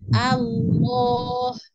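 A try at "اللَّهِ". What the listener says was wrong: Lamnya tebalkan. Lidah tengah dicekungkan ya.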